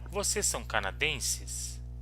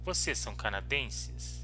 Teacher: we have a question so we change the intonation the intonation goes up